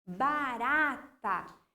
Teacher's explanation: ra ali, é a minha sílaba forte, a minha sílaba tônica. Ela é classificada também como paroxítona, a penúltima sílaba tônica, tá bom?